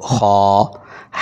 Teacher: گلے کے شروع سے 1 الف جتنا لمبا کیا جائے اس کو، خا۔ ہا، گلے کے درمیان سے رگڑ کھا کر، خا، گلے کے شروع سے آواز تھوڑی سی موٹی۔